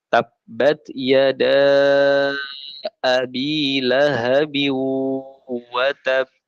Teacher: ditahan 2 rokat baru memantul. Ini namanya qalqalah yang akbar